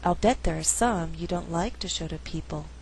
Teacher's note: I could choose to stress in the second half of the sentence only like and people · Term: stressing to content words